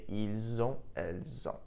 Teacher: because O N T begins with a vowel sound, we link the two sounds together · the S in il, elle, which is normally silent, was actually pronounced, and I pronounced it like a Z.